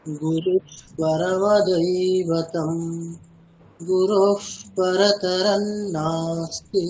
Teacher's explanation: এই বিসর্গের পরে প থাকার জন্য বিসর্গটা ওই ফয়ের মতো উচ্চারণ করা হচ্ছে ওখানে